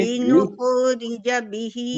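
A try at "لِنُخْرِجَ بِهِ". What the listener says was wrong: नहीं नुख, नहीं नुख, ये तो कलकला हो गया ना, आवाज पलट गई. नहीं, जल्दी नहीं पढ़ना है. ये रखावा है. रखावा में क्या होता है, आवाज जारी रहती है, साउंड स्लो, साउंड आवाज का जारी रहना. अब ये नुखो, नुखो ये जारी नहीं हुआ, या पलट गई आवाज. नुखो पढ़ गई, नहीं नुख, नुख ये जारी.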